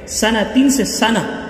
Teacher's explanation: سنتین سے سنہ وقف کی وجہ سے گول تا کو ہا بنا دیا جائے گا